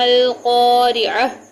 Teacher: اسی طرح عین اور تا کو ہا میں بدل دیں گے کیونکہ یہاں وقف کیا جا رہا ہے